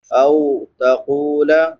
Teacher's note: واو ساکن ما قبل فتحہ یعنی زبر ہے تو اس کو نرمی سے ادا کریں گے، یہ واو لین ہے۔